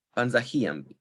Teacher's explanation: stress falls on the anti-penultimate syllable